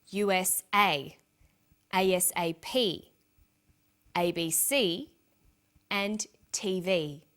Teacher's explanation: each letter in the abbreviation is pronounced separately, but the last letter is pronounced more strongly because it carries the primary stress